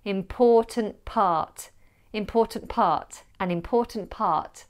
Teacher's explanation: you'd probably drop the last T of important when you put it next to P of part